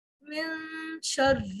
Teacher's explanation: نون کی آواز کو خیشوم میں لے جانا ہے، ٹھیک ہے، اور اظہار نہیں کرنا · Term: اخفا